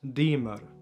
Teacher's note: auf standardalbanisch auf toskkisch sagt man demer da ist ein R am Ende